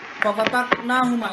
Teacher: Itu caranya adalah memberikan efek atau getaran ketika membacanya, ada getaran sedikit atau guncangan supaya qalqalahnya itu muncul